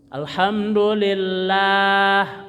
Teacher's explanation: lillah lahnya panjang dua harakat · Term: Mad